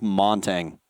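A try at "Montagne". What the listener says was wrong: Montaigne. The G is silent.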